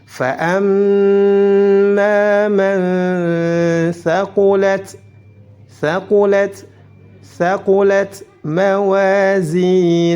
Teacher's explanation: Mawa panjang 2 harakat karena ada alif sebelumnya fathah